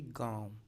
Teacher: तो नाक से कम और मुख से वायु अधिक निकल रही है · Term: अनुनासिक